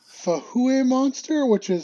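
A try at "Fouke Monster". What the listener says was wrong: Actually, that's not an H, that's a K. So it's the Fook monster.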